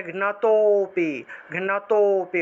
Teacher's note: লুপ্ত অ এর আগের অক্ষরটাকে একটু টান দিতে হবে, টান দিয়ে উচ্চারণ করতে হবে। তাহলে ঘৃণাতোপি, ঘৃণাতোপি, অর্থাৎ তোতে গিয়ে একটু টান দিব আমরা।